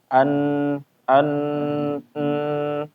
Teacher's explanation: kalau kita mengucapkan huruf nun yang kerasa adalah hidung ikut bergetar ya, suaranya keluar gunah dari khaisu an an n ya dari hidung keluar getaran ataupun ya suara dari hidung. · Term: gunnah